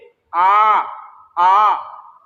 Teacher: केवल मुंह खुला है, होठों की आकृति गोल नहीं है।